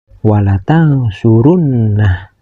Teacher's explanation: Dan selanjutnya ada huruf nun yang bertasdid. Huruf nun yang bertasdid ini harus dibaca guna, yaitu dibaca dengung ke hidung. Panjang dengungannya sekitar 1 alif setengah atau tiga ketukan. · Ini dinamakan mad silah qosirah yang harus dibaca panjang dua harkat bilamana disambungkan membacanya. Namun bilamana dihentikan membacanya maka huruf ha ini harus disukunkan